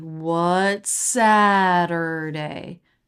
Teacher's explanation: Going up and peaking on sa.